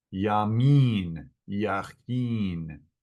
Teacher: the I sound in Hebrew is like a long E. It's an een.